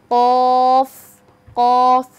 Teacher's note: উচ্চারণের স্থান হলো জিহ্বার গোড়া, তার বরাবর উপরে তালুর সঙ্গে লাগিয়ে